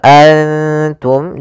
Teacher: tanwin dan nun sukun itu sama bunyinya kedua-duanya adalah bunyi n maka ketika bertemu ta nunnya disamarkan ke huruf ta an langsung kepada makhraj daripada makhraj huruf ta wum seperti itu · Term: Ikhfa